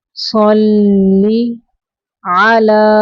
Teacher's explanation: لام کھڑی زبر لا کو بھی 2 سیکنڈ تک لمبا کریں گے